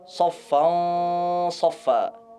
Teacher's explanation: Maka ghunnahnya itu menjadi tebal dikarenakan tanwin bertemu setelahnya huruf yang memiliki sifat tebal.